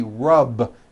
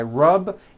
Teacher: the word rub ends with a voiced B.